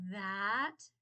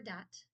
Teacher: There is a voiced TH and an unvoiced TH. So this is actually a voiced TH that was then replaced by a voiced D.